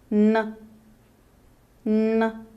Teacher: The tongue tip is pressed against the upper alveolar ridge, and the air is let out through your nose.